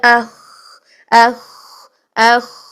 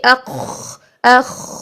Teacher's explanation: اور اگر ہم کھرکھرا والی ساؤنڈ لے کر آتے ہیں تو آپ خود دیکھیے اخ اخ، یہ جو ہے یہ بلندی اور قوت پیدا ہو رہی ہے. اس سے اس آواز سے کھرکھراہٹ کی وجہ سے بلندی اور قوت پیدا ہو رہی ہے